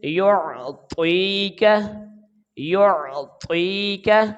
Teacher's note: کاف کے اوپر زبر ہے، باریک آواز کے ساتھ پڑھیں گے، تو کاف کے اوپر زبر ہے تو اس کو ہم جلدی ادا کریں گے۔